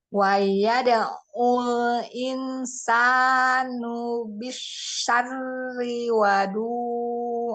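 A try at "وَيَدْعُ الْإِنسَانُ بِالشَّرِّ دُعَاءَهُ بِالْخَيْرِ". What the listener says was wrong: wa-nya. Nggak ada wa-nya. Dari tadi tiba-tiba ada wa-nya soalnya. Yuk, nggak ada wa-nya. Bisyari doa.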